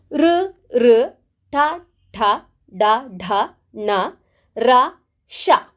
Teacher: ಈ ಅಕ್ಷರಗಳು ನಾಲಿಗೆಯ ಮೇಲ್ಭಾಗವಾದ ಮೂರ್ಧ ಅಂತ ಹೇಳುವುದರ ಸಹಾಯದಿಂದ ನಾವು ಹೇಳುವಂತಹ ಅಕ್ಷರಗಳು ಹಾಗಾಗಿ ಇವುಗಳನ್ನ ಮೂರ್ಧನ್ಯಗಳು ಅಂತ ಹೇಳಿ ನಾವು ಕರೀತೇವೆ ನೀವು ಬೇಕಿದ್ರೆ ಟ್ರೈ ಮಾಡಿ